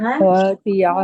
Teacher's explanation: ناصية كاذبة خاطئة ইয়া হবে না খাতিআহ خاطئة হামজা খেয়াল করি হামজা জবর আ হবে হামজা জবর ইয়া হবে না